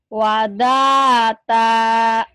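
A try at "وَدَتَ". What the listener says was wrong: Pendek. Wadata.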